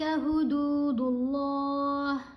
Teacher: دال کو جب ہم نے لام سے ملایا تو یہاں لفظ اللہ کی لام کو ہم نے موٹا پڑھا